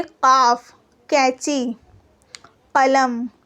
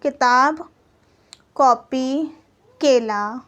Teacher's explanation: काफ एक हलक से निकलती है आवाज और एक काफ यानी कि सिर्फ मुंह से निकलती है